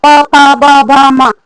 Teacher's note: प बोलेंगे तो प जो है हमारा होठ दोनों है सट जाता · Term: ओष्ठ